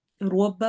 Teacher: روا کو موٹا کرنا ہے، روبا پڑھنا ہے، ربا نہیں پڑھنا